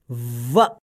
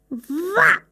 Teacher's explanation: व दंतोष्ठ्य वर्ण है। इसके उच्चारण के समय जिह्वा दांतों में लगती है और ओष्ठ भी मुड़ते हैं। इसे ऐसे बोलेंगे व।